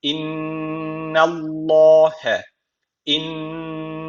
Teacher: ince okuyacağız ama Allah lafzını kalın okuyacağız